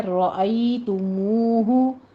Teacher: را مفخم پڑھی جائے گی، ای میں یا لین ہے، تا کے پر ضمہ ہے، ہونٹ گول کر لیجیے۔